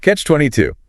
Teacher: Stress on the two at the end.